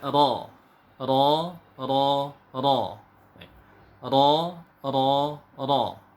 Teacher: ini makhorijul huruf nya punggung ujung lidah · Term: huruf ro